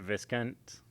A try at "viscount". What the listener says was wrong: you just don't say the S